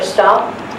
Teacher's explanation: After a P, it's hard to say something other than a T when you see D.